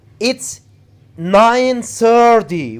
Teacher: it's 9:30 we put the stress on 30